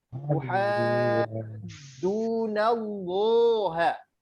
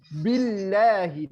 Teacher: Karena sebelum Allah itu harokatnya fathah sama dhamma tebal. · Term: Allahnya tebal